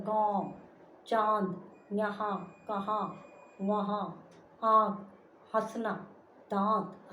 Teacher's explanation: अनुनासिक इसका प्रयोग नाक और मुंह दोनों से किया जाता है।